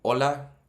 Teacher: you can tell the H is silent